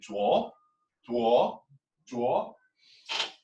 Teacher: the second one is a rising tone kind of like a question